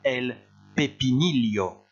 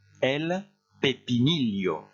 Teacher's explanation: Et vous faites bien le double L comme un L suivi d'un I.